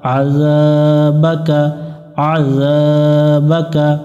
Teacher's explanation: আইন গলার মধ্য থেকে একটু চেপে পড়বো